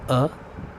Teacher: ह्रस्व अ जिसमें एक मात्रा का समय लगता है, अर्थात अल्प समय में उच्चारित किया जाता है